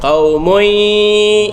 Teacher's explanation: Qaumui tanwin bertemu dengan ya, idgham ma'al ghunnah qaumui. Jadi kita idghamkan tanwin itu ke dalam ya beserta dengung, mana kita baca 2 harakat qaumui yaf, semua pergi keluar angin.